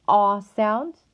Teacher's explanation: is represented by a lowercase a to produce the ah sound the tongue will be low our lips will be unrounded and our tongue should feel tense